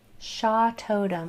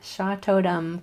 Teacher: I made sure my lips were closed when I said the M at the end.